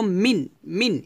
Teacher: এখানে আমরা মিং এভাবে গুণনা করব না, মিং বলবো না, বলবো মিন, মিন স্পষ্ট করে পড়ব। মিন, হা, এটাকে বলা হয় স্পষ্ট করিয়া পড়া, অর্থাৎ আপনি মিমকে নুনকে ধরবেন, কোনো ধরনের শব্দ করবেন না।